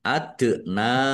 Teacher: dal sukun bacaan kolkolah dibaca memantul ditampakkan pantulannya